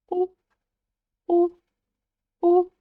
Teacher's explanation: Сначала произносим букву «у», а затем ее очень краткую версию. И у нас получается «у», «у», как будто бы мы с вами слегка удивились.